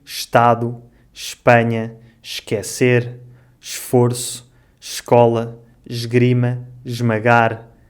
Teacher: quando o E é seguido de um S e de uma consoante. Normalmente, nesta situação, o ES pronuncia-se sh ou j.